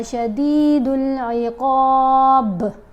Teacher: جب با کو ساکن پڑھیں گے تو اس کے اوپر کلکلا بھی ادا کریں گے